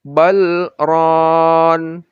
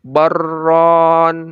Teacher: Jadi harus dibaca bal, berhenti gitu. Lalu rona berikutnya ya. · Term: saktah